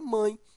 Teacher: nós temos ó a vogal e o esse E aí ó ele tem o som de i está ao lado de uma vogal e é fraco então ele é uma semivogal